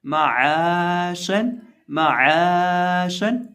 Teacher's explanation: आइन जो है इसको हम हलक के वस्त से अदा करेंगे और साथ इसको एक अलिफ के बराबर लंबा भी पढ़ेंगे · जुबान का वस्त ऊपर मद्दे मुकाबिल तालु से लगे तो शीन अदा होता है।